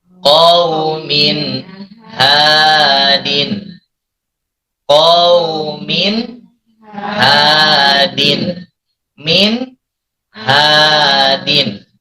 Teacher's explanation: Tanwin bertemu dengan ha, maka tanwinnya dibaca jelas, tidak samar. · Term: idhar